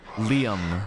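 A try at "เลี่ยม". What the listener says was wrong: Actually, it's Liam. Tone. Liam. Tone a little bit lower.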